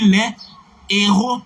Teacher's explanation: devant un H aspiré, on ne fait pas de liaison